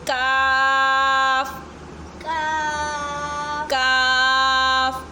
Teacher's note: काफ़ कव्वे के पास वाले हिस्से से अदा होता है थोड़ा मुंह की तरफ करके